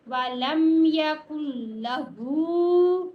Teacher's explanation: کاف نے لام کے ساتھ ملنا ہے، کل لا، ٹھیک ہے. ہا کے اوپر الٹی پیش ہے، الٹی پیش کو ایک الف جتنا لمبا کرتے ہیں. کاف کے اوپر بھی پیش ہے، وَلَمْ يَكُنْ لَهُ، ٹھیک ہے.